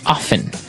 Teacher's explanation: Now with pronunciation, some people like to pronounce often, right? They kind of leave out the strong T sound. Well, other people say often.